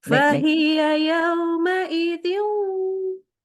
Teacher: Jadi memasukkan suaranya ke dalam hidung. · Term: gunnah